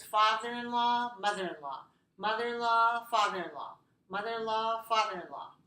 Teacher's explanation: when we pronounce this, mother-in-law, what happens? Linking, right? So it sounds like mother-in-law, all of this together.